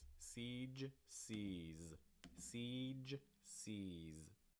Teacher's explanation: seas seas again we get those ju sounds at the end make sure your throat's vibrating hard on these